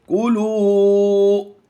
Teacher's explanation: یہاں پر ہم واو مدہ کرتے ہوئے لمبا کریں گے